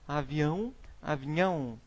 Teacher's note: Letra J, nós temos a transformação por palatização, é o nome dado à transformação de um ou mais fonemas em uma palatal